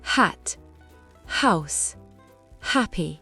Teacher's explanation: en anglais, la lettre H se prononce. C'est un souffle, pas une voyelle.